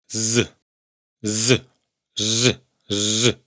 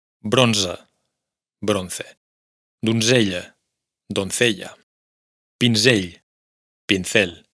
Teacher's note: Y llegamos a la última letra del alfabeto. La Z se pronuncia siempre como la S sonora